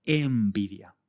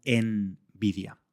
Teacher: al pronunciarla la n se convierte en una m por influencia del sonido siguiente, que es una b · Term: asimilación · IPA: /em'bidja/